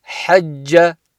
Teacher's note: because the sound carries on, the 2 sounds join together, you won't have the qalqala that you normally would on a jim with a sukoon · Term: shadda